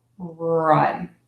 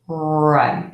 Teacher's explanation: the tongue is not Trill it does not move it does not flap it does not tap in English it just stays there the air is going to continuously move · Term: R sound